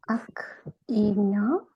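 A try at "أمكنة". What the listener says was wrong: Oh, okay, but the meme stays actually.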